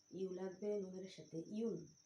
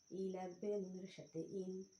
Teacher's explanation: ইয়া যেন জিহ্বার মাঝখান থেকে নরমভাবে আদায় হয়। ইয়া যেন হামজা অথবা আইন অক্ষর না হয়।